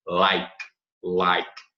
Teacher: Do you like também, lembrando o E mudo, né? Final de sílaba E mudo, morre o som no K.